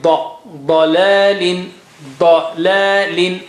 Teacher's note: ض is very thick and high.